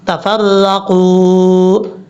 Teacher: جب یہاں پہ وقف کریں گے یاد رکھیے گا واو کے اوپر جزم ہے، یہ واو ساکن کی وجہ سے واو مدہ ہے، ایک الف کی مقدار اس کو لمبا کریں گے، اور یہاں پہ صاد کا مطلب ہے آپ یہاں پہ رک سکتے ہیں، سٹاپ کر سکتے ہیں، یہ وقف مرخص کی علامت ہوتی ہے، رکنا چاہیں تو۔